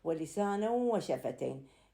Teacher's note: لسانا ينتهي بالتنوين، الحرف اللي بعده أو الكلمة اللي بعده تعتبر كلمة أو حرف، هنا عندنا واو فيحصل إدغام. هذا الإدغام يسمى إدغاما ناقصا. ليش؟ لأن ذهاب الحرف وبقاء الصفة، بقت صفة حرف النون لكن إذهابه بالإدغام يعني اندغم.